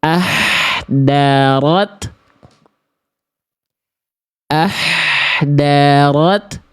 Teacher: Yang A salah karena berubah menjadi huruf dal jadi tipis ya. Dan makhrajnya beda. Kalau huruf dal kan di ujung lidah ke pangkal gigi atas.